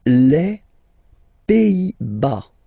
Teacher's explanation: Final S here, not pronounced.